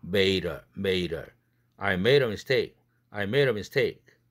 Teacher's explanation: 드가 뒤에 어가 모음이니까 링크 시켜야 되겠죠?